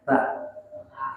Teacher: Lidahnya, posisi lidah lurus, kemudian naik ke atas. Dari ke ujung lidah ditempelkan di ujung gigi atas ada Sa, lembut, tidak ada bunyi S-nya.